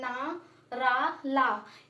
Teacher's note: तो वत्सर् यानी जीभ एवं मसूड़ा दोनों से मिलकर जो बोले जाते हैं